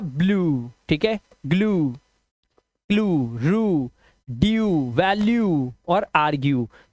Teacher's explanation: यू ई का जो उच्चारण है वो या तो उ हो जाएगा या फिर यू हो जाएगा